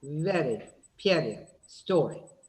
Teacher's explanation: Your tongue makes only one single tap. Only one single tap.